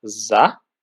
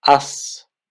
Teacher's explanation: consonants like z become voiceless at the end of the word. So what this means is that as z, from z it becomes s, because the s sound is pronounced in the same position of your mouth, with the only difference that you don't really use your voice.